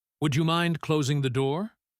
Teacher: Falling intonation, you are cold and want the door shut now.